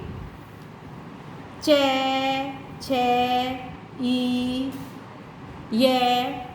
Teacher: जीभ थोड़ा सा हमारा तालु से लग करके चलती है